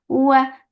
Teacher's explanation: Wa makhraj of waw is circling your lips. Fatha open jaws.